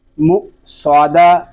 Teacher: آگے دال ساکن میں کلکلا ہو رہا ہے اس کو بھی ظاہر کریں گے